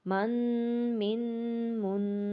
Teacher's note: غنہ ناک میں ہوتا ہے، یعنی اس کی آواز جو ہے وہ ناک میں جائے گی